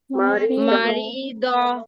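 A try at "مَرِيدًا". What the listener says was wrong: মারি টান হয়ে যাচ্ছে আপু টান হবে না মারিয়ো মারিয়ো মারিয়ো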